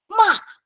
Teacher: Fourth tone is from a highest point to very low. Okay, and it's very sudden.